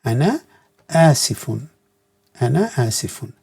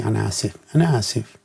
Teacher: Ana asifun. But normally when you do everyday talk, you don't pronounce the last vowel or the mark, so you say ana asif.